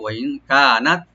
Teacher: ওয়াইন কানাত মানে এবং যদি হয়, ওয়া ওপেন রাখবেন, নুন সাকিন এখানে আমরা গুণা একফা করে পড়বো